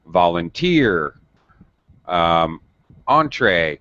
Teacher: the stress is in the last syllable